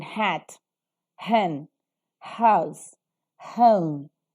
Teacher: sounds that are produced by the obstruction or narrowing between the vocal cords and the air passing through the glottis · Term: glottal sound